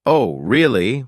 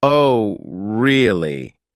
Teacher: if someone says, Oh, really? with a high surprised tone, they're genuinely interested or shocked. But if they say, Oh, really? with a flat tone, they might be skeptical